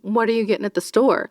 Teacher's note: the kind of the upspeak at the end of a sentence